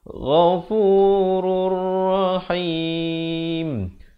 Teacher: Ra tanwin di depan naik di atas ra yang bersabdu idgham bila gunnah, masukkan tanpa dengung. Ghafurur rahim, dan diwaqafkan dengan sekurang-kurangnya 2 harakat, 4 atau 6 harakat.